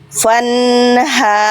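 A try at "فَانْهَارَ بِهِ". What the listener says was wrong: Ro, bukan ra. Fanharo. N-nya nun tasdidnya tahan, namnya pendek karena fathahnya nggak ketemu alif. Jadi ketika dibaca fanharobihi finari jahannam.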